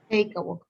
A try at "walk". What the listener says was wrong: No es walk. No, there's no L. Walk. Sounds like this. Walk. Walk.